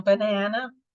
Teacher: famoso schwa, som preguiçoso da pronúncia do inglês, que você vai ver no banana, no começo e no final.